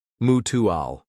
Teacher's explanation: Notice the stress on the first syllable of mutual.